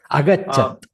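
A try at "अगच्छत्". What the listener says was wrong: No, not dirga. Agachat.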